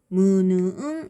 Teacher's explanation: 코로 공기가 이제 나오면서 나는 소리라고 해서 선생님이 코를 막으면 소리가 달라진다라고 했어요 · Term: 비음